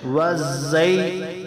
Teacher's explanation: یا لین ہے، اس کو ایک الف مقدار سے بھی کم لمبا کریں